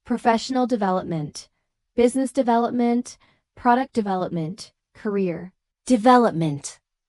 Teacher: with primary stress on the second syllable